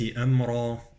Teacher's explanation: أمرا مفخمة، الراء مفخمة